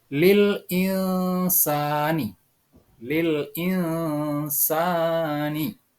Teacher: Nun mati itu dibaca samar-samar dan didengungkan. Itulah yang dimaksud dengan ikhfa.